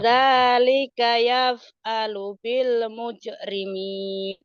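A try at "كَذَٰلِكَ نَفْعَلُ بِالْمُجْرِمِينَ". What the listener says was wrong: Bukan yap tapi nap ya itu nun.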